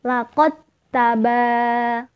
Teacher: Laqad taba masuk ke huruf yang kedua yakni taknya ditasydid. Jadi cara membacanya mentasydid tak. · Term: idgham mutaqariban